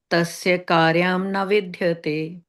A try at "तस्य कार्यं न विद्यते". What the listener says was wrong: Tasya. Not tasye. Tasya.